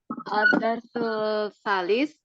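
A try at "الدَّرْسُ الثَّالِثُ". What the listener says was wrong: Disambung alif lam syamsiyah. Ad-darsus tsalis. Masuk ke sa-nya. Bukan darsul, tapi darsus tsalis.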